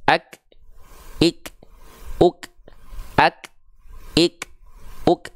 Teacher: nafasnya karena dia bersandingan dengan sifat yang namanya syiddah bukan rakwah syiddah itu membuat suaranya tertahan